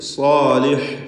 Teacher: സ്വാദിനും അലിഫിനും തഫ്ഖീം നൽകുക പൂർണ്ണമായും തന്നെ.